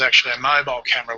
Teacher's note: Actually ends in an e vowel sound, and the next word begins with a schwa sound. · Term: Vowel plus y plus vowel